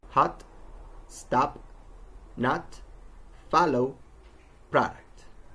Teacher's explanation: some words are spelled with an O but are actually pronounced with A